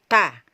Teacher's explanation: Ini semua ketiga huruf ini, ta, dal, dan to, semua keluar dari ujung lidah ya, ujung lidah yang ditempelkan di 2 gigi seri bagian atas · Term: makhraj ta